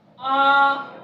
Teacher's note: आ कहने में दोगुना समय लगता है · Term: दीर्घ स्वर